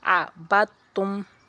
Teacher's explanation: اب دال کو ہم نہیں پڑھ رہے، تا زبر بت، تا میں پیشتم بت تم، یہ مدغم ہے، میں دال کو تا میں ملایا گیا ہے